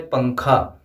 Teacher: پنکھا دراصل جب ہم لکھیں گے تو پنکھا ہوگا، لیکن جب ہم اسے پڑھیں گے یعنی بولیں گے تو پنکھا بولیں گے، یعنی نون کو یہاں پہ چھپا دیتے ہیں، نون کو پڑھتے نہیں ہیں، لکھتے ہیں نون کو لیکن نون کو پڑھتے نہیں ہیں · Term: نون کو چھپا